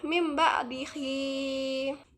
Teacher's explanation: Ketika ada tanwin atau nun mati bertemu dengan ba, maka wajib dibaca iqlab. Cara bacaannya yaitu tanwin dan nun mati diganti dengan mim mati.